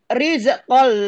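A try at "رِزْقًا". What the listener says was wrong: Rizqol, rizqol, jangan dipantulkan. Riz, riz, jangan dipantulkan. Rizqol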